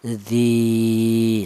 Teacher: Di dibaca matobi, alasannya ada ya mati yang didahului huruf yang berharokat kasroh. Adapun panjangnya matobi yaitu satu alif atau dua harokat atau dua ketukan.